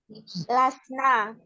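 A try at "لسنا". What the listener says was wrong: Nunnya panjang ya. Nanya panjang. Jadi lasna kayak gitu. Lasna.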